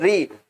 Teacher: आपकी जीवा मूर्धा में लगती है